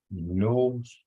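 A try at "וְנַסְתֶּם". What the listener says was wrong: Nas. That's a right there. Wanas Tim. Tim. Wa. Nas. Tim. It's a hard T sound because there's a dot in it. Then you got the EH from the 3 dots. And then I got the M. Wa nas Tim. Wa nas Tim.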